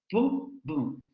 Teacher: Los labios se van a juntar, van a impedir la salida del aire y después la van a liberar de manera abrupta. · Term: oclusivas